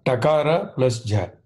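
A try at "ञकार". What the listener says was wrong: It is not takara. The third one you are reading. It is not. Please see the letter. What is the first letter? The third example. First, Nyakara, yeah. Nyakara.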